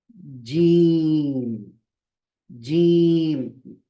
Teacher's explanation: क्या करेंगे ऊपर जो तालू है हार्ट पैलेट है उसको लगाएंगे centre of the tongue touching the हार्ट पैलेट